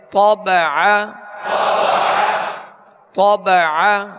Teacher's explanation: طا کو پر پڑھیں گے اور عین کو درمیان حلق سے ادا کریں گے